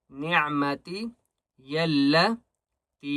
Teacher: تا کو بھی 3 الف کی مقدار کھینچ کر پڑھیں گے